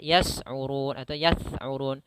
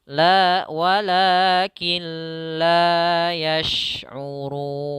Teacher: dengan shin yang dialirkan atau disebarkan suaranya. La walakin la yash'urun.